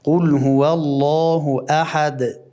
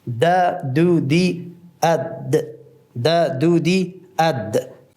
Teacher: قلقله که انفجار است به خاطر که حرف قویست